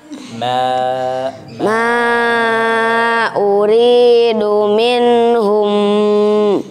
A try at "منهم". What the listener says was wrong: ماذا حصل في النون يا إخوان منهم من هذا نبر لا لا بيأسى منهم